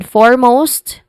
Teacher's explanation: foremost which has a stress on four where it has a o an o sound or a diff thong sound here.